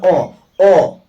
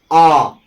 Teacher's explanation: दीर्घ के उच्चारण में ह्रस्व की अपेक्षा इसमें जो है दुगना समय लगता है